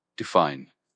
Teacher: it's pronounced define with the emphasis on the second syllable